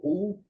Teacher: While phonating U, the tongue gets elongated and the tip of the tongue retroflexes a bit. So U, you will see that the tongue gets retroflexed a bit.